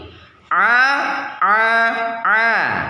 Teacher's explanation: posisi lidah bagian depan tidak merekat ke langit-langit atau infitah